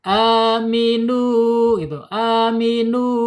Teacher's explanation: aminu nggak boleh masuk ke hidung. Ya, rongga mulut saja ya. Di rongga mulut saja, tidak dari tenggorokan ya udah pasti ya, dari bawah tenggorokan suara kan mengalir ke rongga mulut. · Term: al-jaub